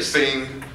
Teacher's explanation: nasal velar. It's a G with the N sound merged with it.